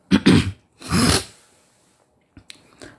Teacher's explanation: اعوذ اعوذ اعوذ، پہلے حمزہ پھر عین، حمزہ آخری حلق سے اور عین جو ہے وسط حلق سے، درمیانی حلق سے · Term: حمزہ اور عین